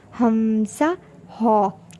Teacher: اقصی حلق کو for throat بھی کہتے ہیں، اس سے بھی 2 حروف ادا ہوں گے، ہمزہ، ہا۔ ان کی ادائیگی بہت سمپل ہے۔